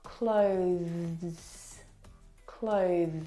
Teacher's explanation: the th sound is very very soft it is definitely still there it needs to sound different from the verb close okay which